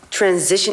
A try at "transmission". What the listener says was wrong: What did you say? You said transition.